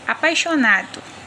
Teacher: Percebe-se que o som do i quase nem aparece. Se o i, no caso, tivesse o som mais forte e mais demorado, a palavra seria pronunciado assim, apaixonado, e não apaixonado. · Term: semivogal